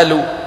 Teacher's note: فمثلا خذوا حرف القاف، في بلاد يجعلونه همزة مثل بلاد الشام ومصر والأردن